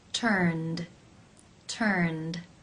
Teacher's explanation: The final sound in the infinitive is the n consonant sound, n, which is voiced. Therefore, it is case 2, where the ed is pronounced as the d sound.